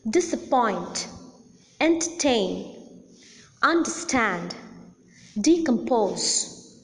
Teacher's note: the last syllable or the third syllable is the most prominent syllable. Hence, the last syllable receives the primary accent.